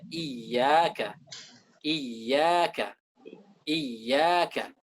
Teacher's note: Yang harus kita baca di sini adalah ya itu dari wasatul lisan, dari tengah-tengah lidah.